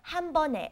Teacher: And you pronounce it 네, not 에, because of the 받침, the second consonant under 한 번.